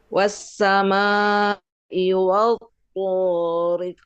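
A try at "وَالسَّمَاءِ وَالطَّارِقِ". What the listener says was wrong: Jangan terlalu ditahan, khawatir jadi tasydid. Biasa saja. Was-samaa'i wat-thariq.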